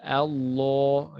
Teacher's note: Lidahnya yang melengkung. Makanya tebal. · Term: lam yang tebal